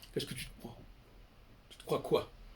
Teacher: Le E du TE, il ne s'entend pas, c'est pas un E